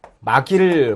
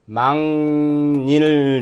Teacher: 막일이 아니고 망일 이렇게 소리가 나죠. 이응과 니은으로 한다는 거